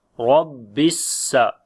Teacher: On the sin we make hums quality, and similarly whistling sound · Rab we read in heavy sound due to fatha sign on it, and on the shad letter we make bit strong wise